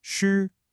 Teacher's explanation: it's a high flat first tone. It doesn't go up or down.